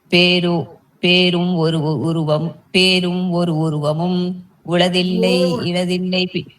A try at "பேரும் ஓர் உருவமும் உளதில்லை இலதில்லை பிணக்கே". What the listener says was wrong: பேரும் ஓர் உருவம், எல்லாமே ஒரு இல்ல, ஓர் சொல்லணும்.